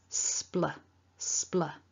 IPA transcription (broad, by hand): spl